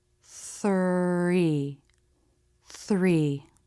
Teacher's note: in the th HR cluster the lips will round a little bit for the r as you make the th · the very tip of the tongue comes through the teeth the air passes around the tongue the tongue is relaxed there shouldn't be any pressure in the mouth or a stop